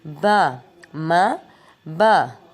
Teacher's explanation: ماں پڑھتے وقت سختی سے بند کریں گے ہونٹوں کو، با پڑھتے وقت آرام سے بند کریں گے اور دونوں ہونٹوں کی تری ملے گی.